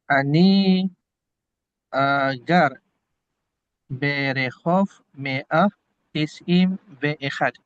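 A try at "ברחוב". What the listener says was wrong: Bukan Berehov. Barhov. Barhov.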